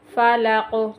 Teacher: قاف پہ کلکلا کریں گے